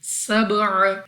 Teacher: با قلقلہ میں سے ہے، تو جب ہم اس کو ادا کریں گے ہمیں اپنی آواز واپس لوٹتی ہوئی سنائی دے گی